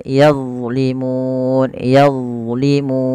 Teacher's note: huruf d bukan huruf mantul dia tidak boleh mantul nah bagaimana melafalkannya sebagaimana tadi di awal yaitu pangkat Maf hujung